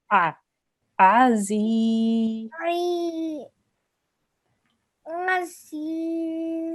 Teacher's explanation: this ayn comes from your throat